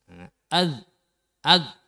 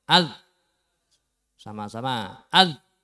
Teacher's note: Berarti untuk zal ini ujung lidahnya menempel di ujung gigi yang atas.